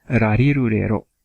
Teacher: this r sound is actually very soft. It's closer to an L sound in English, sort of like a l sound, right?